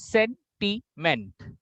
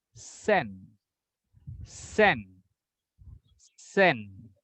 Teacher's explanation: There are 3 syllables. Sentiment. And the more emphasis will go to sen, sen, sen.